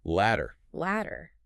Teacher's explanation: Ladder, on the other hand, utilizes the hard D sound, where the tip of your tongue sharply taps the alveolar ridge, which is the roof of your mouth right behind your top teeth.